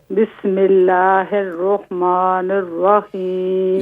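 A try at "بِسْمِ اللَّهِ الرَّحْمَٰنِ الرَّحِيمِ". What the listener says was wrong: یہاں الرح کو واضح کریں. بسم اللہ الرح.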